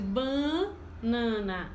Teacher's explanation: nós nordestinos, nasalizamos a primeira sílaba